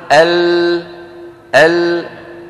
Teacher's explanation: طيب الصوت طالع من هنا من الوترين الصوتيين، لما يصل إلى هنا يجد الطريق أمامه مسدود فينحرف بعض الصوت عن يمين اللسان وبعضه عن يسار اللسان، ثم يتابع طريقه إلى الخارج كما نرى في الصورة التي على يمين اللوحة، كيف أن هذان السهمان الأبيضان يدلان أن الصوت يأتي من الطرفين. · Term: اللام